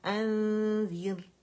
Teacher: اور یہاں پہ ہمارے پاس نون کو چھپایا جائے گا ذیل کی وجہ سے، ٹھیک ہے، اخفاء کا لیٹر ہے. کاملہ گریڈ کا ہم نے غنہ کرنا ہے.